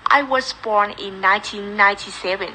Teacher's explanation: Ở đây em hãy chú ý là em đang bị nói thành born như thế này, tức là cô cảm nhận được lưỡi có căng lên rồi nhưng mà chưa tạo thành âm R rõ ràng